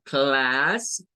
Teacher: algunos lo van a hacer gesticulado con el sonido ae o sea como Class bajando